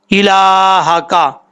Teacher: لام کے اوپر کھڑا زبر ہے، ایک الف کی مقدار لمبا کریں گے